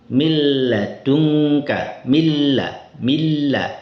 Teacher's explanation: nun sukunnya ini hilang sempurna, zatnya hilang, kemudian sifat gunnahnya pun hilang, tidak ada. Mil ladungka, milla hilang, langsung semuanya masuk ke huruf lam. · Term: idgham sempurna